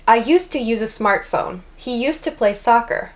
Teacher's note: In each of these sentences, I contracted used to to use to.